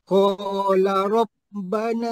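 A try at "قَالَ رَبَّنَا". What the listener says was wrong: Ha la panjanglah. La tu panjang qala.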